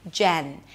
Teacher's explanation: You start with a j sound, then the e as in red, and then you bring the tip of the tongue up for the n